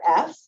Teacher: think about what is the sound for f oh I see my teeth are biting down on my bottom lip I'm blowing air out